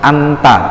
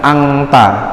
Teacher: Jadi kita bacanya nggak pakai NG, tapi pakai NT. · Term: bangsa NT